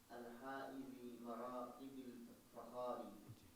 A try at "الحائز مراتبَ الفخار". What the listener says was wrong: مراتبی نہیں مراتبہ،